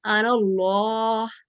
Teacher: जो खाली अलिफ है या खाली हर्फ है वो गिर जाएंगे, और इसको हम जोड़ के पढ़ेंगे